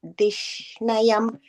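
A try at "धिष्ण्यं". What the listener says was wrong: The last line, first word, dishnyam. There's no full na, it's just a in. Dishnyam.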